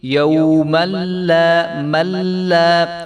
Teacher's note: لام کے آگے جو الف ہے تو اس کو یہ پڑھا جائے گا، ایک الف کے برابر اس کو ہم لمبا کریں گے